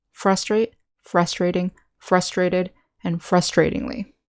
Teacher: In the noun, we say frustration, with the syllable stress on the second syllable. With the verb, adjectives, and adverb, the syllable stress is on the first syllable.